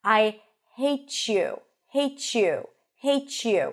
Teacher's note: We hear a ch sound, like in chicken, but it's not a ch sound. It's the combination of a T and a ya that lead to the pronunciation of a ch sound.